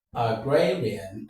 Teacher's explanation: So the stress falls on gray